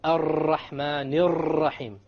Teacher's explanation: For example, in the phrase Ar-Rahman Ar-Rahim, many people fall into the error of making their tongue roll